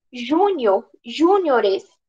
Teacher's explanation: plural de Júnior é o júniores com deslocamento de sílaba tônica